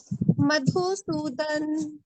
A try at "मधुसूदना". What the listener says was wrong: सूदन नहीं, ये संस्कृत पढ़ रहे, मधुसूदना, सूदन हम हिंदी, हाँ, हिंदी में हम ऐसे पढ़ेंगे मधुसूदन, पर संस्कृत में पूरा उच्चारण होता है मधुसूदना।